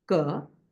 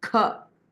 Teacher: And there is Alpa Prana, ka, and Mahaprana, kha, that is pronounced. So there is a distinction between ka and kha.